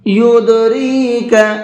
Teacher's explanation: دال کے اندر قلقلہ کریں گے، ہلکا سا آواز کو ڈبل کر کے پڑھیں گے